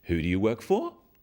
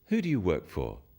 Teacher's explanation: use a falling tone it sounds friendlier